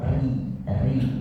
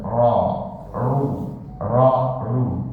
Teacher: jadi kalau ri itu tipis, ru itu tebal